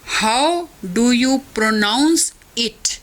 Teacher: हाउ पर और प्रोनाउंस पर स्ट्रेस है, डू यू और इट पर नहीं है